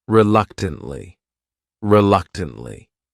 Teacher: this word has four syllables and the stress is on that second syllable that third syllable also has that schah reluctantly reluctantly what it